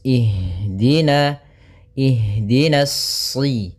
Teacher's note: pada lafal ha usahakan di sini mengalir nafasnya dan lembut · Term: jaroyanu an nafas